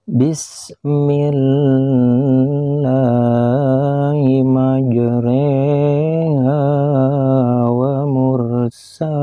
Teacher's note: Imalah yaitu membaca huruf yang berharokat atau baris fathah yang dimiringkan kepada harkat atau baris kasroh